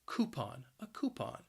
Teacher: that first syllable and that first syllable can be challenging because that cou is just pronounced as ku